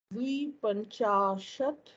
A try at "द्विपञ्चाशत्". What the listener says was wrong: एकनिमिषं भवत्या किञ्चित् तत्र दीर्घं द्वि इति न द्वि द्वि इत्येव